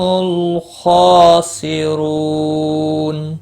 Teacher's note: خا مستعلیہ ہے، پور پڑھا جائے گا، اس کے اوپر کھڑی زبر ہے، ایک الف کے برابر کھینچ کر پڑھیں گے۔ · سی رو را پیش کی وجہ سے پور پڑھا جائے گا۔ رو واو مدہ بھی ہے، ایک الف کے برابر کھینچ کر پڑھیں گے، اور وقف کی صورت میں نون ساکن پڑھا جائے گا۔